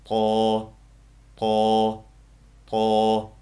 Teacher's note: til uchi ikki udiltishimizning ust tarafiga tegadi va tilimizning orqa tarafi tanglayimizga yaqinlashadi.